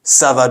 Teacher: rising intonation makes it a question and well responding with sa a descending intonation or falling intonation you're making a just normal sentence as the response